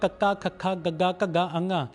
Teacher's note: ਜਿਵੇਂ ਕਕਾ, ਖਾ, ਗਾ, ਘਾ, ਅੰਘਾ ਇਸ ਨੂੰ ਬੋਲਣ ਲੱਗਿਆਂ ਆਵਾਜ਼ ਸਾਡੇ ਕੰਠ ਚੋਂ ਆਉਂਦੀ ਹੈ ਇਸ ਕਰਕੇ ਇਸ ਨੂੰ ਕੰਠੀ ਧੁਨੀਆਂ ਕਿਹਾ ਜਾਂਦਾ ਆ